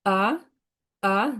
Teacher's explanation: Second tone উপরে উঠবে এটা। আ আ দুইটা আলাদা হচ্ছে না।